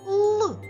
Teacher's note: твердий приголосний тому що коли ми його вимовляємо то повітря зустрічає перешкоду у вигляді язичка який піднімається вгору і стає за верхніми зубками торкається під небіння як позначається твердий приголосний так однією рисочкою молодці